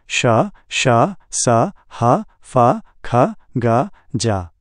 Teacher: हवा का आंशिक अवरोध के साथ घर्षण करते हुए निकलना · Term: संघर्षी फ्रिकेटिव, फ्रिकेटिव